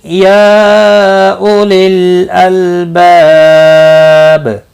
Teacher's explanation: یا مد منفصل ہے 3 الف کے برابر کھینچ کر پڑھیں گے